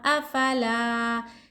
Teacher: یہاں الف سے پہلے حرکت زبر ہے، یہاں الف مد ہو رہا، لا کو ایک الف کی مقدار کھینچیں گے